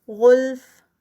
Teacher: غین heavy, غلف فا کا ہمس. کرہن، را ہیوی، کرہ اینڈ پہ ہا کی ساؤنڈ آئے گی، را پہ جا کے کر اور آگے ہا کی کرہ.